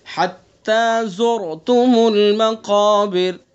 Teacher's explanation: را ساکن ہے، اس سے پہلے پیش ہے، تو اس لیے پر ہوگی